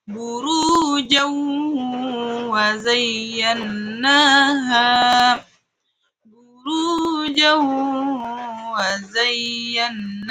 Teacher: Contoh kedua ada tanwin bertemu waw. Maka tanwinnya dianggap tidak ada dan kita langsung masuk ke waw. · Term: idgham bi gunnah